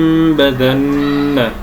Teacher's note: نقلب النون الساكنه او التنوين الذي بعده باء ميما ثم نطبق الشفتين اطباقا خفيفا بلطف ولين بدون كز للشفتين لاللا يتولد عند كزه ما غنه منطط من الخشوم ونخرج غنه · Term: الاقلاب